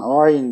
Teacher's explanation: Arapçada boğazdan gırtlaktan Ayn dememiz lazım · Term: ayın harfi